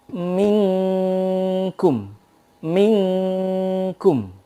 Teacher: Kalau menghadapi qaf dan juga kaf itu engnya begitu sempurna nih. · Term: ikhfa